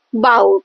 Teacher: the first syllable A is unstressed and the second syllable bout is stressed. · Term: unstressed syllable